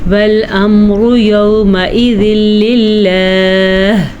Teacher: للہ میں جو آخر میں ہا آ رہی ہے اس کو ضرور ادا کریں گے. والامر یومئذ للہ، ٹھیک ہے، اس ہا کو ضرور ادائیگی والی کیفیت سے نکالنا ہے.